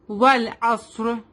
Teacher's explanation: عین come from the middle part of the throat and صاد is heavy letter